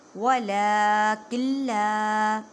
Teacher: نون ساکن کے بعد لام ہے، ادغام بلا غنہ کریں